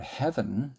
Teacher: If you were to imagine the word heaven, you have the same vowel sound twice, even though it is spelled once with ea and once with the e only.